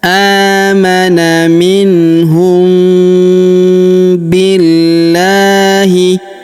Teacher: mim sukun bertemu dengan huruf B, maka mim sukunnya melebur ke huruf B. Kita dengungkan dan kita tahan dengungnya 2-3 harokat ya.